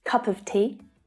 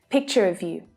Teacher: Of, with the lazy schwa sound again.